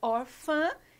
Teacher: muda o timbre da vogal, muda o som da vogal A, em vez da gente falar A, a gente fala ã.